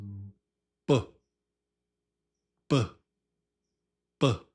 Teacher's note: The lips pop with your voice.